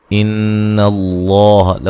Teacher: سکتے ہیں. ان اللہ لفظ اللہ کو موٹا ادا کریں گے، نون مشدد پہ غنہ ضروری ہے